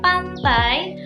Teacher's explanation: Dua vokal ini menyatu sebagai satu inti suku kata. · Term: diftong